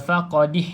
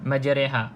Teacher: kita tak baca majriha, kita baca majreha dengan bacaan condong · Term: imalah